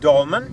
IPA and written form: ˈdɒlmɛn (dolmen)